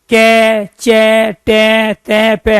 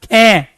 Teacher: खे में वायु ज्यादा है तो खे कहलाएगा महाप्राण